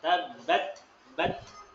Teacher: kalau telapak tangan kita dekatkan ke mulut terasa ada udara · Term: hamas